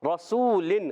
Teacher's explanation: رسولن، نون سائن تنوین کے بعد آگے کاف آگے، اور اخفا میں سے، یہاں اخفا کا قاعدہ ہوگا، اخفا کریں گے، یعنی اخفا میں نون ساکن میں غنہ کریں گے، ایک الف کا غنہ ہوگا، ناک میں آواز لے جائیں گے اور نون کو چھپا کر ادا کریں گے